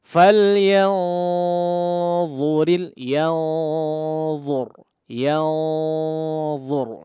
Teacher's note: wajib ditebalkan dari sisi gunnahnya ketika diikhfakan